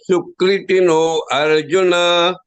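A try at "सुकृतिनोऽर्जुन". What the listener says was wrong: But that A should be lopa, it should be hidden. You should say Sukrit no Arjuna.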